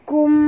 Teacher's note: mim mati bertemu ba, tutup mulut, dengung, ikhfa syafawi.